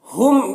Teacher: ہم کے میم میں اظہار شفوی ہو رہا ہے، اسے جلد پڑھنا ہے